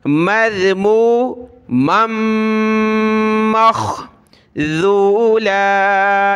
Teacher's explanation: پھر میم کو خا کے ساتھ، ناک میں آواز پیدا ہوگی، مذمو مخذولا، یہ ذال ہے، ذولا۔